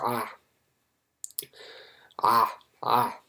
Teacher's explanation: So the voice pharyngeal fricative is ain. Essentially what you're doing is you are closing your pharynx. · That's why it is pharyngeal, and then the fact that it's fricative means that although the pharynx is closing, and so you'll feel it contract, you're still allowing air to pass through. And then the voicing is that your vocal cords are also going to vibrate. · Now, ain, in pure linguistics, we say that it's a voice pharyngeal fricative.